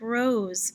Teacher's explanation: write it like zebra very good but also is like rose when s follows a voiced letter and all vowels are voiced the s sounds like z